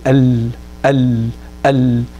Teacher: So when you say al al al, as long as the sound comes from the side, that's what Ayman al-Suwayd is referring to, while these authors here are referring to the actual deviation of the tongue, al, slightly deviating the tongue so that the sound comes on the side of the tongue